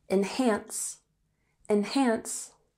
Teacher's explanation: And enhance has emphasis on the second syllable. Enhance. Enhance.